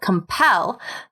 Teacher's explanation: So a good rule of thumb in American English is to add an extra L if the basic word is stressed on the last syllable. So compel, where the stress is on that last syllable, compel becomes compelled with two L's.